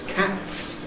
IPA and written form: kæts (cats)